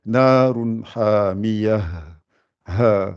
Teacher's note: Faut qu'on entende bien le ha. C'est un son grave.